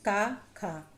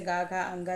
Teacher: पहला और दूसरा अक्षर अघोष होता है, तीसरा चौथा पांचवा अक्षर सघोष होता है